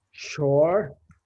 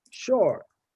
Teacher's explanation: the difference between a low tone sha and a high tone sha